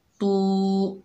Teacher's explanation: तौ जो है हरूफ मुस्ताला में से है, मोटा पढ़ा जाएगा। तू, तौ की आवाज़ मोटी होगी।